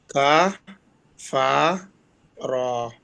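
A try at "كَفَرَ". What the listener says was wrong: আরো ফাস্ট হরকতের উচ্চারণ ভাইয়া। কাফার কাফার, রা হবে না, রা হবে না, র সাউন্ড আকার হবে না।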